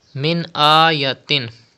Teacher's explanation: Stretch khada zabar on hamza.